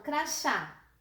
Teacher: Tem acento por quê? Porque a sílaba forte é o chá, é a última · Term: oxítona